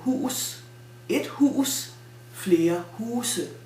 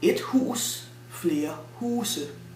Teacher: Nouns which have a glottal stop in its basic form, like for example, et hus, loses it in plural form when the plural form ends with an e.